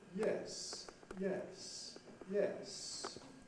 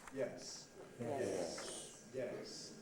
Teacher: notice that the high fall starts high the low fall starts not so high they both go down to the bottom